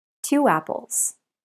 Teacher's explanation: two apples we link the sounds with W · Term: linking two vowel sounds